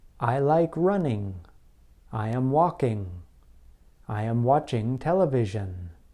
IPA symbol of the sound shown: ŋ